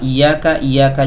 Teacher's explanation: huruf ya keluar dari tengah lidah ya mendekat ke langit-langit